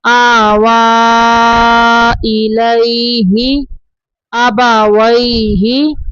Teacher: یا کے اوپر کچھ نہیں ہے تو یا کو نہیں پڑھیں گے